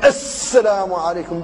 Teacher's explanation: يبالغ في تشديد السين تشديدا كبيرا حتى تكون صفيرا مدويا